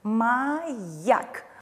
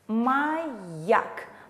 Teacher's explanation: Мы отчетливо слышим звук «йод»